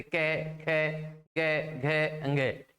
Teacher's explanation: यानी जब इनका उच्चारण करते हैं तो हमारी जीवा नीचे वाले मुखमंडल यानी नीचे वाला जो भाग है उस भाग में स्थायी रूप से पड़ी रहती है और ध्वनि सीधे कंठ से उत्पन्न होती है, तो इन्हें कंठ्य व्यंजन कहा जाता है।